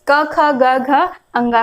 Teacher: कंठ की मदद से हम क, ख, ग, घ, अंगा का उच्चारण कर पाते हैं।